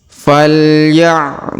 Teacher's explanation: Huruf du kita panjangkan 2 harokat ya, karena di depannya terdapat waw sukun.